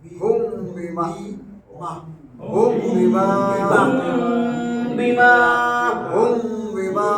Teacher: পরে খালি আলি মদের হরফ লিখতাম হুম বিমা এখানে গুণনা কেন মিম সাকিনের পরে বা হরফ আসছে ইকফা গুণনা